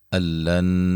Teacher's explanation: نون ساکن کا ادغام ہے لیکن بلا غنہ ہے، غنہ نہیں کریں گے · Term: ادغام بلا غنہ